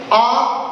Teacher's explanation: तो आ बोलते हैं तो जिह्वा पीछे की ओर, आ बोलने पर जिह्वा पीछे की ओर खिंच रही है। देखो आ, तो देखो आ बोलते जिह्वा आगे से पीछे की ओर जा रही है, इस प्रकार से ये आ है जो पश्च स्वर है।